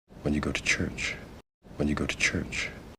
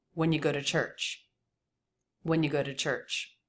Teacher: with you reduced and with a flap T between these vowels